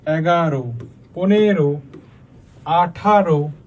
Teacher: 11 থেকে 18 সংখ্যা বাচক শব্দের শেষে হচ্ছে কি হয়? অটা ও উচ্চারণ হয়। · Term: অন্ত অধ্বনির সংবৃত উচ্চারণ